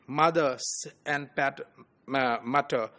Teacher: mother and Mutter, they have the same initial bilabial sound.